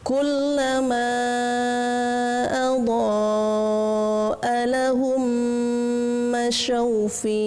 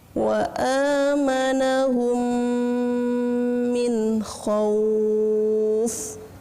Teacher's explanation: ada mim sukun yang jatuh, setelahnya ada mim lagi, sehingga dibaca dengan gunnah.